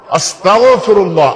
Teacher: গাইন এই কণ্ঠনালী থেকে আসবে